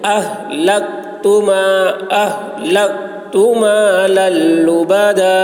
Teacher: یہ کاف میں قلقلہ نہ ہونی پائے، آواز ٹکرائے گی نہیں